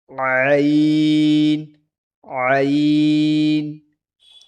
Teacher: ऐन हलक से अदा होती है हलक के बीच के हिस्से की तरफ से